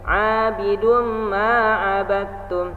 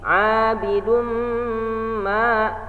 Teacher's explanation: ini hukumnya adalah idgham bighunnah cara bacanya di dengungkan ditahan dengungnya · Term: idgham bigunah